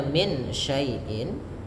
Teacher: Karena adanya nun sukun bertemu syin maka nunnya disamarkan dibaca antara idgham dan izhar. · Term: ikhfa hakiki